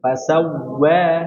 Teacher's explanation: pada huruf Wawu dimonyongkan sempurna.